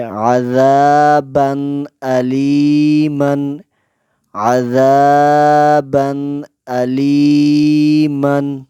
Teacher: تنوین کے بعد حمزہ آیا ہے، تو اس پر غنہ نہیں کریں گے، بغیر غننے کے پڑھیں گے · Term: اظہار